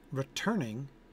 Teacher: three-syllable word with a stress on the middle syllable